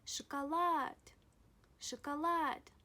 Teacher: The letter O, when unstressed, is pronounced A.